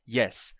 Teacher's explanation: que tem som de ya ya não é som de i o y do inglês não tem som de i